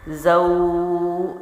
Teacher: یہ ہے 3 الف کی لمبائی، یعنی واو کو لمبا کر کے پڑھنا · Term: حروف لین